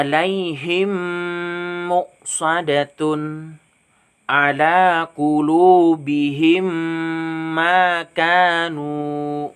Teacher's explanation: qulubihim makanu nah ini seperti itu bacanya jadi cara membuatnya ingat mim sukun nya digabungkan dengan huruf mim nya dan dibaca berdengung Hai saya jadi membacanya tuh harus berdengung ingat mim sukun nya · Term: idgham mimi